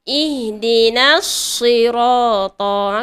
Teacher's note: Kita gugurkan sahaja alif mad ini. Okey, dan kita terus sambung pada as-sirata. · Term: iltiqa'us sakinain